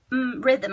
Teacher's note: We don't go straight from the th to the m. There is a schwa sound there